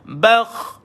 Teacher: Matikan kha duduk dekat hujung kerongkong